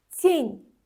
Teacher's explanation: Burada n-dan sonra da məhk znak gəldiyi üçün n-ni da incə tələffüz edirik.